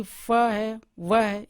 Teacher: लेबिया dental दंतोष्ठ दांत और होठ के माध्यम से जिसको बोलते हैं, माने कि फ है व है इत्यादि।